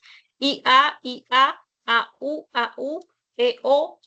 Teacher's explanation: Porque tiene que ver con la altura que alcanza la lengua al momento de articular y fonema vocálico. Entonces, vas a tener I anterior alta, la e es anterior media, la a es considerada central baja, la U es posterior alta y la o es posterior media. Esos son, imagínate que esa es tu cavidad bucal y esas son las partes a donde se va a dirigir la lengua para articular los los fonemas vocálicos.